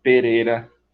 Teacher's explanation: Tipo feira, esse R com uma vibração só, o TEP